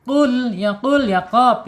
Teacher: Asyidah secara sifat ditahan. Kemudian secara makhraj ada di ee pangkal lidah